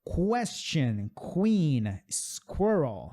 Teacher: ela vai ter esse som aí de o K e o W junto.